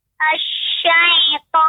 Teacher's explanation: Ada terasa seperti dengung, seperti suara tertahan di hidungnya, huruf to-nya.